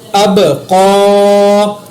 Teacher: با کے اوپر قلقلہ کیا، قاف کو پر پڑھا۔